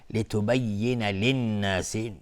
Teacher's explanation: لتبین للناس لام شمسی است نون مشدد 2 حرکت غنه میدیم